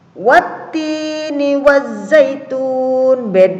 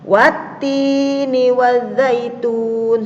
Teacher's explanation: kalau idgham syamsiyah alif lamnya ini dilewati atau tidak dibaca, langsung taknya yang dibaca atau huruf sesudahnya.